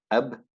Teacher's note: there's a stoppage of the breath when you say ab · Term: stoppage of breath